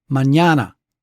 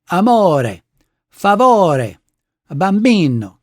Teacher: Uh consider for example Spanish words like mñana. See that's three syllables with the middle syllable accented